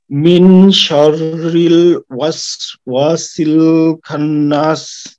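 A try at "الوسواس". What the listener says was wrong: দেখেন এখানে ওয়াস ওয়া ওয়াস ওয়া এমন পড়তে হবে ঠিক আছে খান্নাস না খন্নাস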